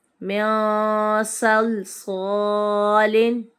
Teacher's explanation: یہاں پر صاد آ رہا ہے نون ساکن کے بعد، حرف اخفا کا ہے، تو یہاں پر ہم غنہ کریں گے